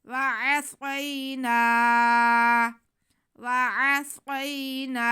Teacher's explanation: نون پہ زبر ہے اور ساتھ میں الف ہے تو یہ الف مدہ ہے، تو اسے نون کی آواز کو ہم کھینچیں گے